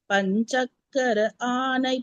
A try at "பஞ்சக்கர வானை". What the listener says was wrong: வா போட்டுருக்கோம். பஞ்சக்கரவானை பதம் பணிவாம்.